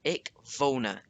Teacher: it's W that makes a V sound in German. There's no such thing as a W sound.